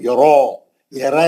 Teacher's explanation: یرا، را کو موٹا پڑھیں گے، کھڑا زبر ہے، 2 رکعت. پہلی کنڈیشن ہے زبر ہے، کھڑا زبر ہے، 2 رکعت.